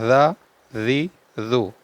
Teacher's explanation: ज और जाल को बगैर सीटी के पढ़ना है जी जू जबान की नोक और ऊपर के दांतों के अंदरूनी किनारे से ये जाल अदा होता है बगैर सीटी के पढ़ा जाता है